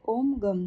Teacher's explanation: નો ઉચ્ચાર કરી વર્ણોમાં પહેલો વર્ણ અ નો ઉચ્ચાર કરવો એટલે અ સહિત ગ નો ઉચ્ચાર કરવો ત્યારબાદ તેના ઉપર અનુસ્વારનો ઉચ્ચાર અનુનાસિકા સાથે કરવો એટલે ગમ થશે આગળ ઓમ લગાડવો એટલે ઓમ ગમ થશે આનો